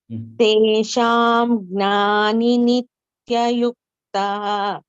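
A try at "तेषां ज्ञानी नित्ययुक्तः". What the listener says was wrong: Teshanyani. Here, instead of this Anuswara, you hear Ja is the first letter. So you use that fifth, this thing that is the Anunasika thing in Teshanyani. Teshanyani Nitya Yuktaha.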